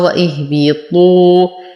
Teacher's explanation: نفخم الطاء مع إتمام الضم. لدينا واو ساكن ما قبلها مضموم، فهو من الطبيعي حركتين.